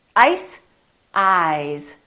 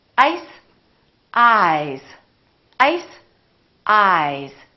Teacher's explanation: the vowel that comes before the voice sound is longer